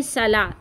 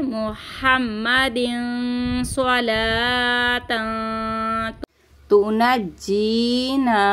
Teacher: तो ये सीन की आवाज़ आती है, आपको सीन की आवाज़ नहीं पढ़ना, आपको पढ़ना है स्वाद